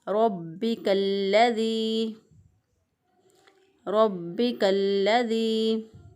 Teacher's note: तो यहाँ पर रा के ऊपर ज़बर है इसलिए इसको पुर पढ़ा जाएगा। बा के ऊपर तशदीद है तो बा को मज़बूत क़ुव्वत से पढ़ेंगे।